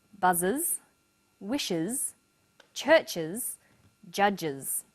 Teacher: The S on the end is pronounced z because it followed an S sound.